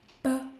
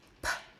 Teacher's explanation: B. No puff of air.